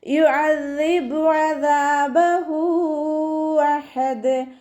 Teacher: ദാലിന് ശബ്ദ വന്നു 2 ഹർഫുകൾ ഉച്ചരിക്കുന്ന കനം കൊടുക്കുക കേട്ടോ. · ദാലിൻ്റെ കൂടെ അലിഫ് മദ് വന്നു 2 കൗണ്ട് നീട്ടിക്കൊടുക്കുക.